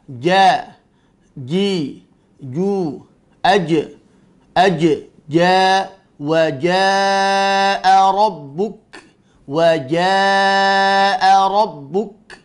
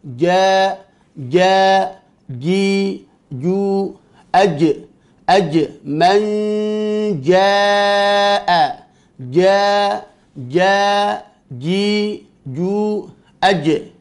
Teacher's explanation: Pada huruf jim, lidah bagian tengah tertutup rapat mengenai langit-langit yang sejajar dengannya. · Jim memiliki sifat syiddah, memiliki sifat jahar. Tidak ada nafas yang keluar.